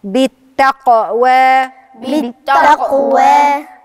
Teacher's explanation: لو ما عملتش اضطراب في القاف مش هتبان القاف يبقى لازم أدي القلقلة للحرف أقلقل الحرف يعني أعمل اضطراب في